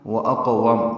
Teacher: واو ہونٹوں کی نا تمام گلائی سے ادا ہوں گی دونوں. وَأَقْوَمْ اس میں 2 واو ہیں.